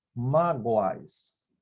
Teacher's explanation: nós já temos um ditongo oral crescente. Eu tenho a semivogal U com a vogal A.